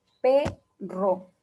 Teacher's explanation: la E de perro es más abierta que la de seco